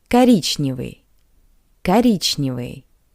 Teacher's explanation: O is unstressed. That's why we pronounce it as a. Коричневый.